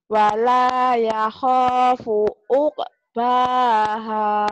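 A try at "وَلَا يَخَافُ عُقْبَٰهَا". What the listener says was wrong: La-nya panjang, ho-nya panjang. Jangan. Wala ya khofu uqbaha.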